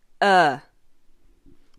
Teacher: It is the most neutral vowel there is. So when you open your mouth, relax your tongue, and do not move your lips, you make that sound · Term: schwa